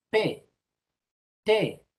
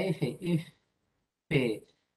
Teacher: vas a notar que el aire sale como golpecitos de aire. Así. En cambio, prolonga la F, F, vas a notar que el aire sale continuamente.